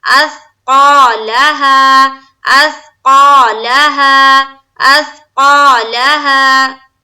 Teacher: قا میں الف مدہ کریں گے، اور لام کو پھر زبر کی حرکت کے ساتھ پڑھیں گے، اور ہا میں پھر الف مدہ